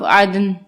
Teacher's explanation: ہماری آواز پلٹ کر آئے گی دال پہ کیونکہ دال بھی حروف قلقلہ کا حرف ہے. تو عین دال زبر عد نون دو زیر نن عدنن آگے وقف عدن.